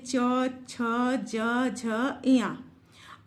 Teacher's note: आप महसूस कर रहे हैं कि आपकी जीभ आपके मुख के भीतर ऊपर वाला, जिसको हम तालु कहते हैं, उसके पीछे वाले भाग को स्पर्श कर रही है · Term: तालव्य